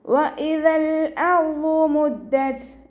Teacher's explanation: ത സുക്കൂനിൽ നിർത്തുമ്പോൾ air pass ചെയ്യണ സൗണ്ടിൽ നിർത്തി കൊടുക്കുക കേട്ടോ